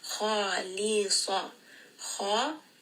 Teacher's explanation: So kha heavy, lam light, swad heavy. · kha is going to be heavy. Lam is light and swad is heavy. So make sure you are making that switch from heavy, light, heavy.